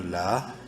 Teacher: الف مدہ ہے، لام کو لمبا کریں گے ایک الف کے برابر